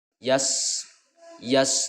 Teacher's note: Nah, jadi ketika ada huruf hijaiyah, salah satunya adalah sin, ya sin yang berharokat sukun, maka ini rakhwah ya menyebutkannya, yaitu ada aliran suara.